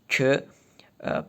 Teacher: So we have k sound in Common Turkic. In some Turkic languages, it is palatalized, like mine, pronouncing it as k, palatal plosive, and even some dialects of Azeri Turkic, in, let's say, Tabriz, they pronounce it as ch, affricate, yeah.